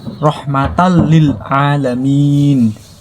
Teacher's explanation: Nun mati atau tanwin ketemu lam atau ro. Maka langsung dimasukkan saja